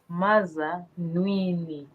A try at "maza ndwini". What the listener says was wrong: We need nasal. Can you help us? It's nasal. Maza ND, eh? Your nasal ND. Yeah.